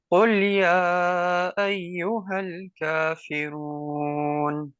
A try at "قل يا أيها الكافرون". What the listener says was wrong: ہاں، را کو موٹا کرو. قل یا ایہا الکافرون. کافرون.